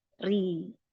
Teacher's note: ketika dia tipis dalam kondisi berharokat kasroh, ya dibaca tipis sambil tersenyum, ri. Nah, ketika dibaca tebal, dia berharokat fathah, dia cemberutkan saja, mulut kita tidak perlu mencucu, misalkan ro gitu ya, sampai maju.